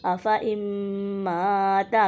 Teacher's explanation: میم مشدد میں غنہ بھی کریں گے، نون ساکن کے بعد حروف یرملون میں سے میم آ رہا ہے، ادغام کا قاعدہ ہے، غنہ بھی کریں گے، یعنی کہ ادغام مع الغنہ کا قاعدہ ہے۔